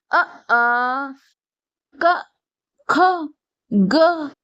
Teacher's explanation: ये सब कंठ से उच्चारित किए जाते हैं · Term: कंठिया वर्ण